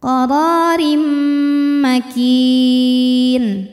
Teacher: Selanjutnya ada idgham bi gunnah, karena ada tanwin kasrah menghadapi huruf mim, maka tanwin dileburkan ke mim, jadi bunyinya bukan rin tapi rim sambil nahan dengung.